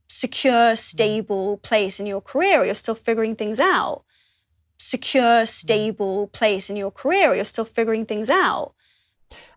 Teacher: when says the word 'out' she does not use any /t/ sound at the end. Instead she cuts off the /aʊ/ diphthong with a glottal stop.